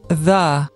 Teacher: this sound is a fricative, which is a consonant made by the friction of breath in a narrow opening, producing a turbulent airflow. This allows for the smooth transition of the and the vowel because there's no blocking of air.